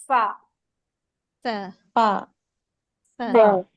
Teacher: दांत ऊपर वाले दांत नीचे वाले होठ होठ के तर वाले हिस्से पे रखते हैं · आपने उर्दू वाले फ में हमस को ऐड करना है और आपका अरबी वाला फ बन जाएगा। आपने अंदर वाले हिस्से पर रखें अपने दांत को और पढ़े फ फ पहले अब हवा निकलेगी और फिर निकलेगा।